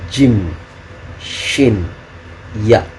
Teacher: lidah bagian tengah ketemu langit-langit yang tengah